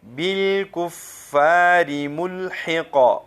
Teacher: اس قاف کو ہم ساکن کریں گے، اور سکون کی وجہ سے ہم اس کے اوپر قلقلہ کریں گے، جنبش دیں گے